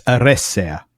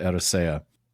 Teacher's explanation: So it's >> and again this is one of those ones that's hard for English speakers but it's a double s. So holding that s for extra long.